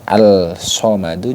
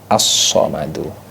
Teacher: Jadi bunyi alnya ini jadi hilang. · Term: idgham syamsiyah